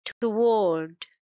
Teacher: It's two-syllable word and stress is on the second syllable.